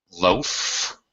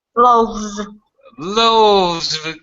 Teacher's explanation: Loaf, of course, is an unvoiced sound. It's unvoiced. V is a voice sound.